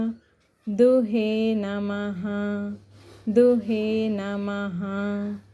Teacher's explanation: అని చదవకూడదండి కృష్ణాయ కృష్ణాయ గీతామృత గీతామృత దుహే నమః దుహే నమః ఇక్కడ విసర్గ వచ్చింది కాబట్టి పూర్తిగా హ అనేది పలకాలండి